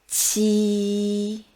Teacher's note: pronounce ji again, then push the air out a bit harder.